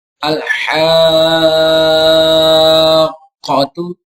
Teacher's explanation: قاف جو ہے یہ حروف قلقلہ میں سے ہے اور یہ مشدد ہے. تو یہاں پر بھی اس کو جماؤں کے ساتھ پڑھیں گے.